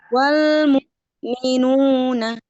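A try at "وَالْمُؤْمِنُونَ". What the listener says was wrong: Ya, Masya Allah. Barakallahu fiikum. Lanjut.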